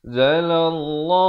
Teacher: Ikhfa hakiki 2 harakat. Zalallah, lafz jalalah dibaca tebal 2 harakat